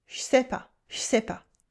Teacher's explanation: Then je loses its vowel before a consonant.